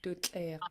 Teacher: And then you have a pinched TL, which will make it snappier and sharper sounding.